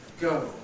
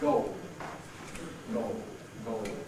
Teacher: a special variety of O that's used before L, before dark L